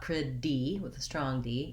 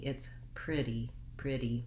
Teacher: It's voiced. I go up and I mark that T, lift my tongue up, but I don't block the air. It's not a strong sound. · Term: flap T